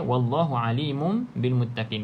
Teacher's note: Jadi bacaannya bunyi huruf mim, tutup mulut rapat, bibir atas bibir bawah. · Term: bacaan iklab